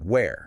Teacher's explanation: you are pushing a lot of air. It's an aspirated sound, almost like a sigh, and the vowel is open.